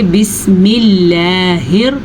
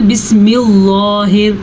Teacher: جب اللہ کے نام سے پہلے زیر آئے گی تو اللہ کا نام باریک پڑھا جائے گا